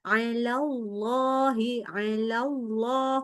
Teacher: Allahnya lebih tebal. Jadi pangkal lidah harus lebih naik lagi.